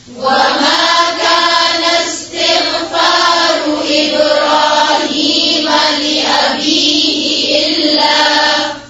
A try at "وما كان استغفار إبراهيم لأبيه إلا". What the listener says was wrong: وما كان استغफार तिग गैन को झटका नहीं दे तिगफारु नहीं है ठीक है